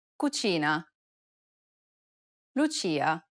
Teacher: Notice how the ch sound is more stressed in Italian than it is in English? Be mindful about pronouncing the ch sound when speaking in Italian.